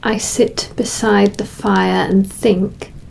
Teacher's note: the first line has a lot heavier Rhythm created by the repetition of those short Punchy I vowel sounds in sit beside fire and think